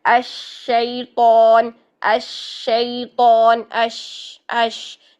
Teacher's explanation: आवाज़ को फैलाना है, मोटा नहीं करना शीन को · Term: शीन की तफशी